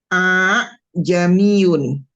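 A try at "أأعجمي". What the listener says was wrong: Ya, betul. Ini pembacaan ini udah betul ya, tashil.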